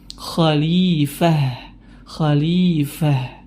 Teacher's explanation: dia berhenti wakaf kemudian huruf tersebut berharakat fathatain atau tanwin fathah terkhusus untuk tak marbut maka gugur berubah menjadi huruf ha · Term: ta marbutoh